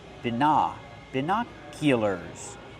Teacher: Put the stress on the second syllable.